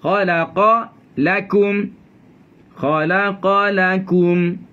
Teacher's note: Diselangi dengan huruf nipis. Yang khalaqa jadi tebal semua. Nipiskan di tengahnya lam itu.